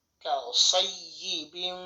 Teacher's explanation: মিম গুন্না করতে হবে কারণ তানভীনের পরে মিম আসছে এটা হচ্ছে ইদগমে বা গুন্না গুন্নার সাথে উচ্চারণ করতে হবে